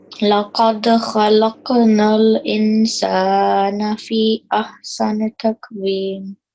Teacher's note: Make sure to prolong the fee for a minimum of 3 seconds